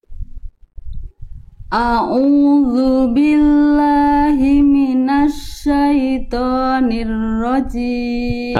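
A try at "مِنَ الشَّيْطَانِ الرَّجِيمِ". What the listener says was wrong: Oke, Bunda tinggal tebalkan huruf-huruf tebal. Contohnya huruf to dan huruf ro. Jangan cuman minasyaitonir rajim. Angkat pangkal lidahnya. Minasyaitonir rajim. Jadi pangkal lidah dalamnya diangkat atau didorong ke dalam biar tebal karakter pelafalannya. Minasyaitonir rajim. Nah, tinggal rohnya tebalkan sebagaimana Bunda melafalkan huruf to tadi.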